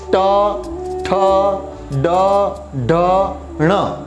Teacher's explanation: मूर्धन्य यानी हमारी जो जीभ है, टंग, वो ऊपर टच करती है, बाद में नीचे आती है, इसलिए उसको बोलते हैं मूर्धन्य।